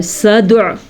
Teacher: دال کے اوپر قلقلہ ہو رہا ہے تو ہم دال کو جھٹکے کے ساتھ پڑھیں گے